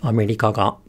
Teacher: So it starts low, goes high, and stays high, and then again the particle attaches high, as in America ga. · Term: Heibang pattern